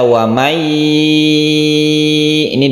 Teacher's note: kita membacanya disertai dengung dipanjangkan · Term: Idgham Bighunnah